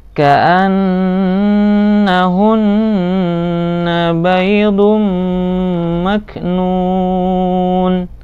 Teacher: Nah, seperti itu, ditahan beberapa saat, kemudian baru zum mak nun. Nu panjang, mat arid li sukun karena berada di akhir kalimat dan di belakangnya ada nun, dan nunnya ini harus disukunkan.